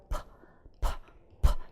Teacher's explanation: 파 하면 그 떨림이 없죠? 이런 게 무성음이라는 거야.